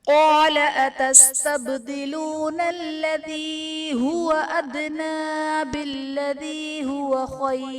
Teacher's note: با حرف قلقلہ ساکن ہے تو یہاں پر قلقلہ خوب ظاہر کریں گے. ادنا میں دال حرف قلقلہ ساکن ہے یہاں بھی قلقلہ خوب ظاہر کریں گے.